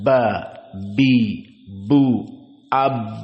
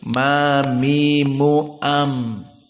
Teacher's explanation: Namun mana yang jadi pembeda? Ba asyaddu minal mim fil intibaq. Bahwa ba lebih kuat tekanannya.